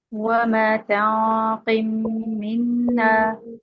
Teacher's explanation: 2 ایک جیسے حروف الگ الگ کلمات میں آئے، ہم نے پکڑ کے ادغام کر دیا